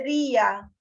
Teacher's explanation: día es una palabra grave porque se acentúa en la penúltima sílaba. No debería llevar tilde porque termina en una vocal A, que es la terminación obligatoria, pero lleva tilde porque hay justamente hiato entre la I y la A.